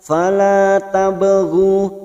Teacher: ba sukun qalqalah sugro karena mati asli di tengah kalimat, jangan lupa dipantulkan